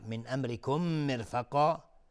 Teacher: میم ساکن بهش میم ادغام شفوی